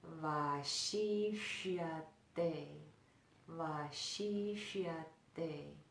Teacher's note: so the tongue draws back for that second sibilant